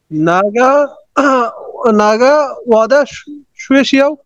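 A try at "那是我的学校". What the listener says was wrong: এটা নাগা, নাটা কিন্তু ফোরটোনে বলতে হবে। নাগা, নাগা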